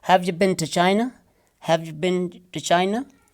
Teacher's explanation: this been will be pronounced as bin. This two actually is ta. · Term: weak forms